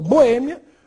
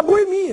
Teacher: As duas são possíveis, mas nós usamos em situações diferentes. Uma pessoa boêmia, boêmia tem acento, termina em ditongo, e a boemia, sem acento, aí no caso, um hiato.